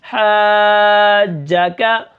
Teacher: ہا کو میں بالکل صاف پڑھوں گا کیونکہ یہ حروف حلقی میں سے ہے اور اس کے اوپر میں مد کروں گا، بڑی مد کروں گا جس کو مد لازم کلمی مثقل کہتے ہیں، یعنی یہ کلمے کے اندر ہے اور تشدید والی مد ہے۔